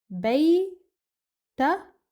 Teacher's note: So again, for a male, what we do, we place Fath'a at the end of Bayt, and then we pronounce Kaf without any vowel